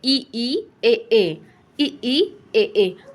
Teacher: इसमें हमारी जीभ का पहला आगे वाला भाग जो है वो उठ रहा है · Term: अग्रस्वर